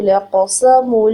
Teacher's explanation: لام کی حرکت لمبی نہیں کرنی. قاف ہیوی لیٹر ہے، اس کو پر پڑھنا ہے، فل آف ماؤتھ پڑھیں گے. قاف کے اوپر حرکت ایک ہے، لمبا نہیں کریں گے.